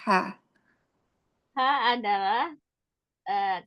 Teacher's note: ha keluar dari tengah tenggorokan.